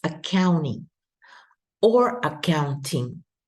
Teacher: you can pronounce the T or you can eliminate the T because there's an N here in this word there's an N before the T so often that is going